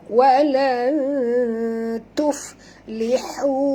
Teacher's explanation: Hu di sini panjang puan, bukan 2 tapi jadi 4 hingga 5 kerana pertemuan waw mat ini ya, yang asalnya mat asli dia bertemu dengan hamzah, maka dia jadi panjang mat jaiz munfasil ya.